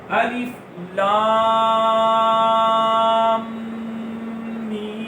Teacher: لام پر مد ہوگی 3 یا 4 5 الف جتنا لمبا کریں گے، میم پر گننا ہوگا، اور میم پر بھی مد ہوگی 3 یا 4 5 الف جتنا لمبا کریں گے. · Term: مد لازم